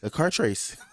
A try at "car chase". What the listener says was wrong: Oh, you can't say chase. You keep saying trace.